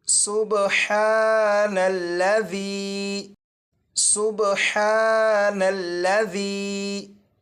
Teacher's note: ये जो बा है, इस पर कलकला खूब जाहिर करेंगे